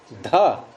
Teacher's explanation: ये ध महाप्राण भी है, घोष भी है